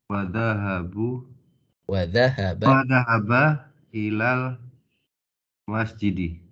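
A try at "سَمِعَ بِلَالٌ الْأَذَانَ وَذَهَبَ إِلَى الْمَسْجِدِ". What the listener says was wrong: Naam, ahsanta.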